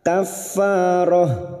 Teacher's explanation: tak marbutoh yang dibaca waqaf maka bunyinya ha